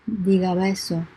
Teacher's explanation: But when you have a B, for example, as in diga beso por favor, if you have it, if you have the B in between vowels, this B would be pronounced more like a V.